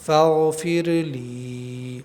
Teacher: یا ساکن سے پہلے زیر ہے تو ایک الف کے برابر ہم یہاں کھینچیں گے